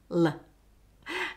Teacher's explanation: With voiced l. For l, the tip of the tongue touches the alveolar ridge and the air escapes around the sides. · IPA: /l/